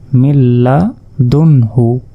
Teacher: সাকিনের পর হা শব্দটি এসেছে যার কারণে এটি হচ্ছে ইজহার আর ইজহার স্পষ্ট করে পড়তে হয় কোন রকম গুন্না ছাড়া